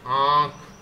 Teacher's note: मुख तथा नाक की सहायता से होता है, जैसे आंख, इसमें आ भी, गला भी चल रहा है और आपकी नोज भी चल रही है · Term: अनुनासिक